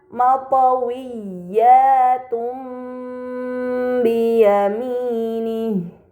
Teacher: terdapat harakat dhahtain bertemu dengan huruf ba ini dinamakan iqlab maka dahtain dibaca mim dengan gunah yang dipanjangkan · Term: iklab